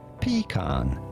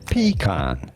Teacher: In English, it is normally said as pecan, stressing on the first syllable